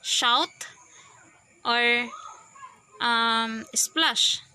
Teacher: The fifth one is the alveopalatal. Sounds produced with the blade of the tongue approaching the hard palate. Example, the SH sounds, SH consonants like shout or splash.